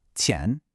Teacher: 钱 has a sharp falling fourth tone, very definite.